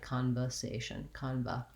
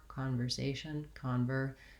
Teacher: word you might be saying this more like conversation kanba and you really want to make sure you still have that tight back r